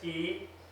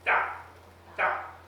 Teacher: But if you say it in the proper way, and you have to practice, you make a ta sound, and with almost no breath coming out of your mouth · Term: unaspirated T